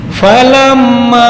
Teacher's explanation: Nah, dengung. Ini mim yang bertasdid disebut gunnah. Ya, gunnah temponya adalah 2 ketukan. Jangan buru-buru, 2 sampai 3.